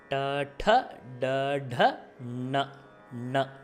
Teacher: ட ட எல்லாமே வந்து அப்பர் பேலட், மூர்தன்னின்னு சொல்லக்கூடிய இந்த வளைஞ்சிருக்கக்கூடிய வாய்க்கு நடுப்பகுதி